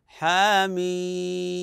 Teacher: ان الياء المديه هي هي في فواتح الحواميم وقعت قبل ساكن وهو حرف الميم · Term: المد اللازم